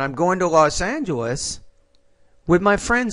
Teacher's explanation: so the tone after Los Angeles should be rising